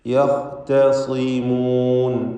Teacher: ഖാഇന് തഫ്ഖീം കൊടുക്കുക, സാദിന് കുറഞ്ഞ തഫ്ഖീം കൊടുക്കുക